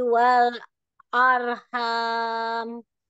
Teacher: lam sukun ro sukun itu harus lengket lidahnya jangan sampai lepas